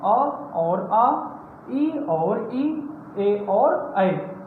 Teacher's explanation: जिनके उच्चारण में मुख गोल ना हो उन्हें क्या कहते हैं? अवृत्तमुखी कहते हैं